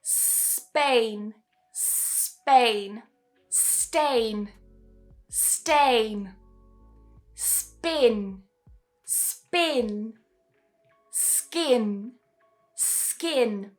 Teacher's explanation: So notice that all of these are s followed by a voiceless plosive after.